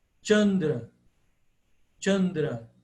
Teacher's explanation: Ele é o C italiano, de ciao. Como se tivesse um T antes